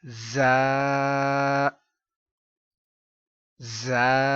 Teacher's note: اس پر سختی، سیٹی، سیٹی کی آواز آنی چاہیے